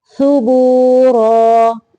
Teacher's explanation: زبان کی نوک کو اوپر والے سامنے کے دو دانت جو ہیں ان کے سرے سے لگا کے سا کی ادائیگی ہوتی ہے.